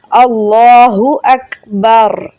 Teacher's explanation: ہا حلق کے درمیان سب سے نیچے والے حصے سے پڑھا جائے گا